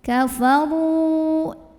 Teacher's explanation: Karena ada waw sukun sebelumnya dhammah. Maka cara membunyikannya adalah dipanjangkan ra-nya 2 harokat. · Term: mad tabi'i